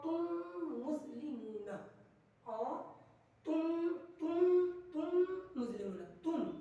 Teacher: میم ساکن کے بعد دوسرا میم آ جائے تو ادغام میم ساکن کا ادغام شفوی ہوگا، یعنی گننا کر کے پڑھیں گے